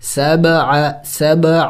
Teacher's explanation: با بھی حروف قلقلہ میں سے ہیں اور ساکن ہے، تو حروف قلقلہ جب ساکن ہوتے ہیں تو اس پر قلقلہ کیا جاتا ہے